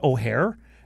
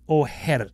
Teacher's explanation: You roll the R one time. It's an alveolar R. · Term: flipped R